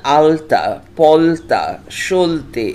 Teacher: একই রকমভাবে বাংলায় আলতা ও উল্টো শব্দের ল ধ্বনি দুটির ভিন্ন ভিন্ন উচ্চারণ হয়, কারণ বাংলায় তয় হসন্ত ইত্যাদি দন্তধ্বনির আগে যে ল বসে তার উচ্চারণ হয় দন্ত লয় হসন্ত